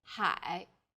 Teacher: a third falling then Rising tone